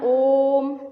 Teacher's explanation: ओम का उच्चारण करने में 2 मात्रा से अधिक का समय लगता है, इसलिए इसे हम प्लुत स्वर कहते हैं।